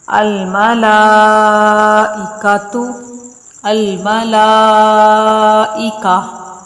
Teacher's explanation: گول تا کا وقف کی صورت میں یہ قاعدہ ہے کہ یہ وقف کی حالت میں ہائے ساکنہ سے بدل جاتی ہے، یعنی کہ یہ گول تا گول ہا پڑھی جائے گی اور وہ بھی ساکن پڑھی جائے گی۔